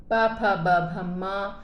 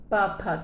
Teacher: प फ ब भ म जब हम बोलेंगे तो ओठ जो है, प फ, तो ओठ आपस में स्पर्श होते हैं, इसलिए इनको हम स्पर्श व्यंजन कहते हैं